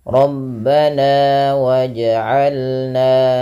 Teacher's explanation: kita namakan dengan bacaan mad tabi'i dan dipanjangkan dua harokat